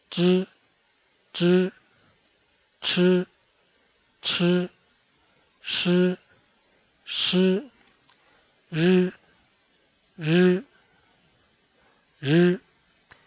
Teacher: Ese grupo de consonantes se pronuncia enrollando la lengua hacia paladar y se pronuncia zh, zh, ch, ch, sh, sh, r, r, r.